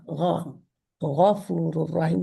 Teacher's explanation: गाइन जो है वो पीछे से हल्क का लेटर है, गले का। गौ, गफूर रहीम, जैसे गरारे करते हैं ना, तो हम गरारा कहते हैं, तो वो गाइन है।